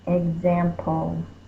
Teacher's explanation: It's not written, it doesn't have its own box. It's just an understood schwa sound before the L of a consonant LE.